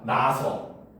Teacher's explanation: 태어나다 할 때 나다에서 아서가 붙으면 이때는 동음 탈락이 일어나서 나서가 되는 거야